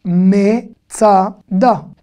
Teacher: Même avec le schwa, le e muet, en début de mot, on va le prononcer me. C'est difficile de dire mtsuyan ou mtsada.